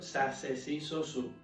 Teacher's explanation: la pronunciación de Za C zi zo zu de manera idéntica a pronunciación con una S